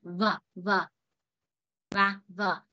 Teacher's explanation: Thì tương tự âm verb và âm verb nó y chang như vậy. Chúng ta sẽ để cái môi dưới bên bên dưới cái răng trên đấy